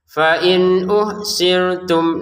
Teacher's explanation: Nun sukun bertemu hamzah. Baca dengan jelas ya.